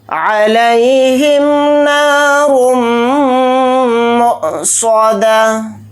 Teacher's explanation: میم کے اوپر تشدید ہے تو اس کے اندر غنہ کر کے پڑھیں گے، حمزہ ساکنہ ہے تو اس کے اندر جھٹکا دے کر پڑھیں گے، صاد کو جلدی پڑھیں گے اور صاد کو موٹا یعنی پر پڑھیں گے، دال کو جلدی پڑھیں گے، تا کو ہا ساکن بنا کر پڑھیں گے حالت وقف میں۔ · عین کو جلدی پڑھیں گے، لام یا زبر لئی کو جلدی پڑھیں گے، ہا کو میم ساکن کے ساتھ جلد پڑھیں گے، نون کے ساتھ الف مدہ ہے، نون الف زبر نا کو تھوڑا کھینچ کر پڑھیں گے